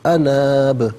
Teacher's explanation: ساکن کریں گے تو اس صورت میں قلقلہ ہوگا، یعنی آواز لوٹتی بھی محسوس ہوگی